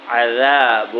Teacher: ذال جو ہے زبان تھوڑی نکال کر پڑھیں گے